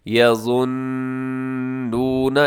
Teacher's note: یہاں نون مشدد ہے تو آپ نے غنہ کرنا ہے، آواز کو ناک میں لے کے جائیے گا